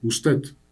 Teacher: Si yo sostengo la U en usted, suena como es más centralizada.